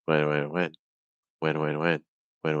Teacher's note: notice that I don't have to round my lips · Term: W sound